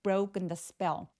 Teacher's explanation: broken 할 때 브로크 아니고 brow 오라고 소리가 나야 되니까 우까지 느껴질 수 있도록 입술을 살짝 내밀어 주세요